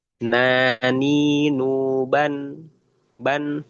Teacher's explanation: huruf nun itu ada di torful lisan, ya, nempel ke langit-langit atas.